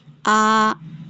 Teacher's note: 2 count ہم اس کو کھینچتے ہیں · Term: الف مدہ